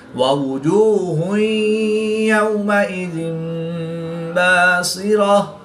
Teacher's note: تا کو وقف کی حالت میں ہا ساکن سے تبدیل کر کے پڑھیں گے